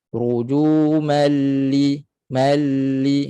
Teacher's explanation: jangan putuskan suara rujumal lish itu putus suara pada lam jangan lam tidak putus suara suara mengalir